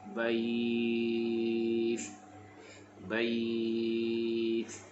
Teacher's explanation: pastikan huruf ta kita waqaf dengan mahbus, sebab ta adalah huruf hams, berdesir